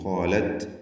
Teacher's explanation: തായിന് ഹംസ് നൽകി ഖാലത് എന്ന് പറയുക.